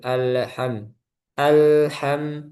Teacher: hati-hati di lam sukun itu jangan sampai mantul